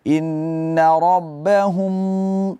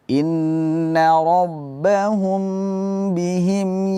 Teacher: Mim mati ketemu ba di sini tidak ditekan, bacaannya tidak terlalu ditekan. Jangan sampai kita menempelkan dua bibir terlalu kuat.